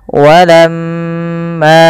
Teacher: usahakan kita menahan daripada bunyi suara mim, karena di sini dilihat mimnya berharakat tasydid. Apabila ada mim berharakat tasydid, maka ia kita namakan dengan bacaan gunnah.